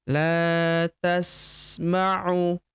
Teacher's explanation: Huruf la kita panjangkan dua harakat karena terdapat tanda alif di depannya yang ini.